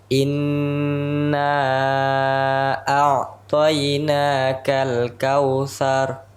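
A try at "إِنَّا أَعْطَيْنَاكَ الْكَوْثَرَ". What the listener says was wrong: Sekali lagi ainnya tipiskan. Tipis dulu.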